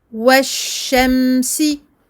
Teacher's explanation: Ici, également, shamsiya, le lem. Donc, on ne la lit pas, on passe directement du waw au shin qui porte une shadda. Il faut faire attention à plusieurs choses, donc à bien faire la liaison, à bien doubler le shin, à donner son temps de bayniyah au mim, donc un temps d'écoulement partiel du son.